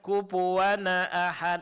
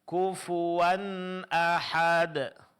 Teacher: Pada tanwin di sini hukumnya izhar, berarti bunyi nun sukunnya mesti jelas.